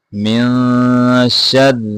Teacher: را کو یہاں باریک پڑھیں گے.